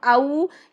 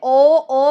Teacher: तो हम बस एक साउंड को अगर याद रख लें कि वाओ लीन की साउंड है औ, पूरा वाओ की तरफ, इसके मखरज की तरफ जाना चाहिए, यानी हमारे होंठ प्रॉपर गोल हो जाने चाहिए जब हम औ ये अदा करते हैं। ओ में प्रॉपर होंठ गोल नहीं हो रहे।